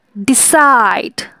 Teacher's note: সাইডে চাপ বেশি পড়ছে, ডিটা সফটলি উচ্চারণ হচ্ছে, ডি সাইড। Begin, বিটা softly এবং গিন হচ্ছে স্ট্রেস দিয়ে।